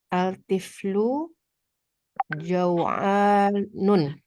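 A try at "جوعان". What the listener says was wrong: Tanpa tanwin Bu. Karena dia termasuk mamnu minas sharof.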